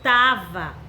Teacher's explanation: A palavra é estava, então ele reduziu para tava, ok? Ficou faltando a sílaba es. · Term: forma reduzida